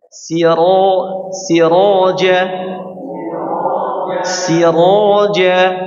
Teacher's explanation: tebalkan ya hurufnya tebal rnya dibaca tebal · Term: ra'nya dibaca tebal